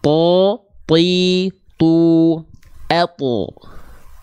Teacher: jadi ketika huruf th dilafalkan pangkal lidahnya naik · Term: huruf tho, huruf to